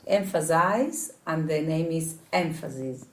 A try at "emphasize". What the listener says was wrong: You're putting a Z extra in. Emphasize. Size. Emphasis.